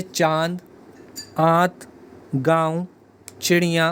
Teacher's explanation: अनुनासिक के उच्चारण में नाक से बहुत कम सांस निकलती है और मुख से अध्यक्ष निकलती है जैसे चांद जात गांव चिड़ियां